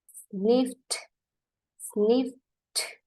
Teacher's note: Habis sniff langsung bunyi T. Karena kalau kita bunyikan dia dengan D, pun akan susah.